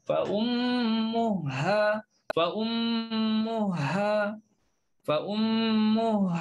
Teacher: Ha jumpa ha. Maka di sini kita masukkanlah ha pertama dalam ha kedua.